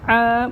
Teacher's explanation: عین کو حلق سے نکال کے پڑھیں گے آ. بہت سے لوگ پڑھتے ہیں آ نہیں ہوتا آ، حلق بند کر کے کھولیں آ.